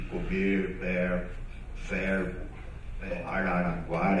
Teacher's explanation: quase que desapareceu o meu queridíssimo R retroflexo